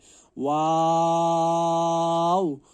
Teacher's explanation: दोनों होंठों के ना मिलाने से वाव अदा होता है, यानी कि वाव के वक्त होंठों को मिलाना नहीं है, और मखरज यही है, दोनों होंठों के ना मिलाने से वाव अदा होता है।